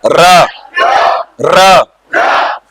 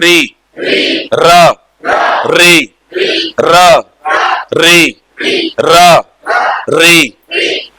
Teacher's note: जब आप कहते हो र तो आपके जीभ के सामने भाग में कंपन हो रहा है